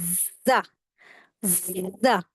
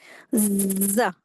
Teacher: जा में हमेशा जलजनाहट सी वॉइस आती है। यह इसका सही मखरज है। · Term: हुरूफ सफीर